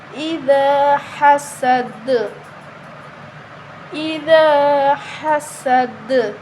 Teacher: وَمِن شَرِّ حَاسِدٍ إِذَا، دال کو نرم پڑھیں گے، دال کے آگے الف مدہ ہے تو اس کو بھی ایک الف کے برابر لمبا کر کے پڑھیں گے. حسد، ہا کو باریک پڑھیں گے، سین کی آواز آنی چاہیے، دال پہ قلقلہ کریں گے